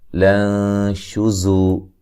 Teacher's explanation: نون ساکن کا باریک اخفا ہوگا